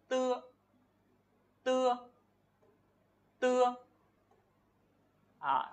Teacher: cái hơi và cái âm của mình nó sẽ đi qua, nó sẽ tạt qua cái đầu lưỡi của mình. Thì mình gọi là âm đầu lưỡi ở đây.